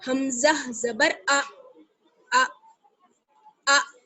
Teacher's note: حمزہ تو دیکھیے ہمیشہ جھٹکے کے ساتھ پڑھا جاتا ہے، اس لیے جھٹکے کے ساتھ پڑھیں گے، حمزہ زبر ا ا ا.